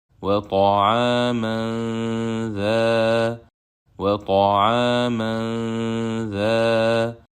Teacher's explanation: But it is not followed by one of the letters of Yarmulun. So we will hide Noon Sakina of Tanween at the point of articulation of letter Dhal with prolonged Gunna.